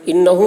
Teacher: انہو میں غنہ ہوگا. انہو آواز کو گنگنائیں گے.